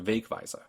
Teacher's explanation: Weg wins the stress game, turning the word into Wegweiser